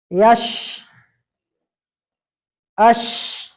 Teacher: जिस तरीके से ज़बान पे ऊपर जाएगी, जैसे ज़बान ऊपर आएगी पीछे से आवाज आपका आएगा तो आवाज फैलेगा, यहाँ पर पूरे मुंह के अंदर आवाज फैल जाता है। और ज़बान ऊपर तालु पर टच नहीं होगी, फासला हो जाता है, बीच में फासला हो जाता है। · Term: शीन